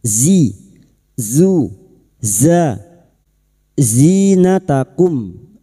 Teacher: Makhrajnya ada pada tarful lisan sejajar gigi seri bawah. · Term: huruf zain